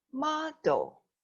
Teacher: The stress or the stronger sound of this word is at the beginning.